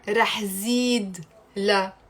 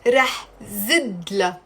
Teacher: I'm dropping the ye sound, the e sound, and I'm making it short with a kasra